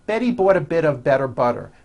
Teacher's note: notice that you do not hear any T sounds. T, t. They're only D's, d, d, which are voiced.